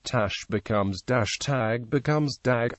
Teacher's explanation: this difference is most noticeable on the unvoiced stops rendering them extremely similar to or indistinguishable from voice stops dot T to D Tash becomes Dash tag becomes dag